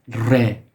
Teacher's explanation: So the initial, it has the R sound, but in Farsi, it's not like the way the English speaking folks pronounce re. It sounds a bit more Russian